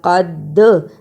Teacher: دال پر جزم ہے اور جزم کی صورت میں دال حرف قلقلہ ہے۔ قلقلہ کا مطلب آواز کا پلٹ کر آنا